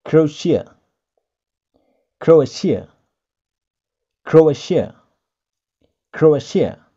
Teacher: Ada sh-nya, bukan tia, tapi sh.